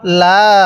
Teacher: এই লামের মধ্যে কিন্তু আমরা 3 আলিফ টান দিব, অনেকেই আমরা লামের মধ্যে 1 আলিফ টান দিয়ে থাকি